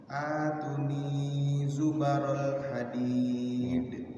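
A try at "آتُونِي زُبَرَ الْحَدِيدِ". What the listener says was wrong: Tu'nya panjang. Atuni, tiga-tiganya dua harokat itu.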